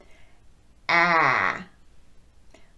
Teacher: the jaw drops pretty significantly for this sound